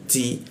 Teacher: Nah, huruf ti bocor tipis, ujung lidah bertemu gigi dia